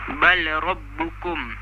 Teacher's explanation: Dia dibaca dengan idgham kamil, iaitu tanpa dengung